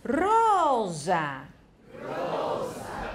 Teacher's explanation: S▁如果是这个▁S▁平常是在两个母音中间的话，它会变成有声念▁z ，▁rosa，rosa，玫瑰▁rosa，▁可是▁sole▁就是▁S，▁那▁sole。那如果后面有有声的子音或者无声的子音跟着那个后面那个子音，它就一样的变成有声或者无声，这个是很自然的，不用想太多了。sbaglio。stanza，stanza，好，这里所以▁s▁跟s▁的发音有声无声的发音有一点一点的一些不同的一些原因的啊。那▁z▁没有怎么特别原因，那就是有时候是▁z，▁有时候是▁c。azzurro。piazza。z▁c。我说了，这里少了一个▁c▁跟▁z▁啊。我们▁c▁跟▁z▁其实我们可以在这里找到。我们上一次也特别注意到一个问题，对不对▁？kako▁ku▁keki。卡克基